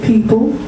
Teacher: I'm stressing the first syllable and reducing the second